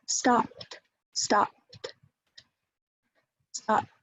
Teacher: No voicing, no vibration in the vocal folds.